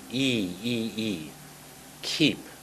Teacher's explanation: Make that long E. E, E, E. Keep. Not kip, but keep.